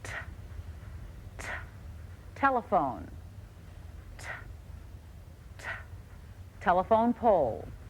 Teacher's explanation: My tongue pushes against the back of my upper teeth. As with P, I let out a small explosion of air. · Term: sound of T